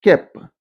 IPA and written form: kep’ (kept)